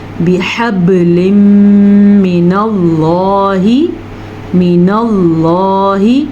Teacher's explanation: نون ساکن یا نون تنوین کے بعد یا آ جائے یا میم آ جائے یا واو آ جائے یا نون آ جائے تو پھر ہم دونوں الفاظوں کو آپس میں ملا کے غننے کے ساتھ پڑھتے ہیں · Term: ادغام بالغنہ